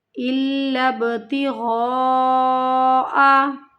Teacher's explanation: مد متصل، اس کو ہمیں کھینچنا ہے 5 الف کی مقدار کے برابر